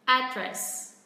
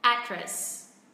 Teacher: nếu mà chúng ta phát âm theo kiểu của người Mỹ thì trọng âm rơi vào âm tiết thứ nhất